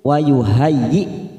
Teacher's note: ada Hamzah sukun jangan disamakan dengan Ain karena tidak memiliki sifat rikhwah